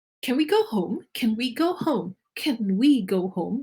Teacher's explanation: We have weak forms in English language. For example, the schwa in can, the word can.